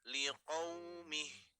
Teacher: dikarenakan di huruf H, maka kita wakafkan menjadi huruf H tanpa memanjangkan huruf H-nya ya